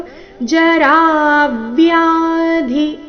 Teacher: ಮೃತ್ಯು ಮೃ ಮೇಲೆ ಆಘಾತ ಜರಾ ವ್ಯಾಧಿ ರ ದೀರ್ಘ ಹೇಳಿ ನಂತರ ಆಘಾತ ಚರಣದ ಕೊನೆಗೆ ಧಿ ಮಹಾಪ್ರಾಣ ರಸ್ವ